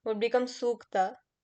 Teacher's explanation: Similar vowels. Similar vowels combine and become long.